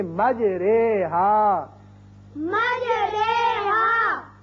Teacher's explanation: اب قرآن پاک میں ایک ایسا لفظ ہے، اصل میں یہ ہے مجراہا، اور یہاں امالے کا قاعدہ یہ ہے کہ ہم زبر کو زیر کی طرف مائل کر کے پڑھیں گے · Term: امالہ